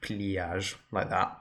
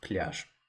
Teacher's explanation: Straight from the consonant to the ya sound.